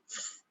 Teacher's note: There's no voice at all. It's voiceless. It's more on airflow, air constriction.